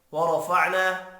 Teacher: فعنا الف مدہ ہے، ایک الف کے برابر کھینچ کر پڑھیں گے